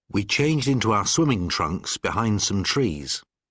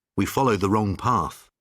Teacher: mark the D and the T sounds that disappear